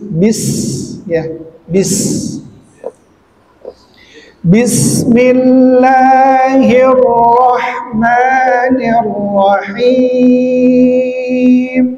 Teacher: Jadi dalam pembentukannya huruf sin itu ada yang namanya sifat hamas ya. Jadi hembusan hembusan angin. Kemudian yang kedua ada sifat safir.